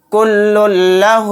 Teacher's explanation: لام کو لام میں جلد ملائیں گے، غنہ نہیں کریں گے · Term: ادغام لام